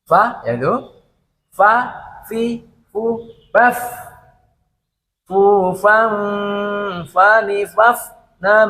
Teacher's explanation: Jadi gigi seri atas itu keluarkan, ya, seri atas itu keluarkan dan mengenai bagian bibir bawah bagian dalam.